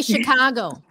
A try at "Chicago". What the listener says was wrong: It's a SH sound chứ không phải là CH.